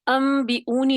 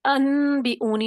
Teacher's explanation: آپ نے نون کی آواز کو میم سے بدل دیا، یہ بالکل یہ والا طریقہ ہے اقلاب کرنے کا۔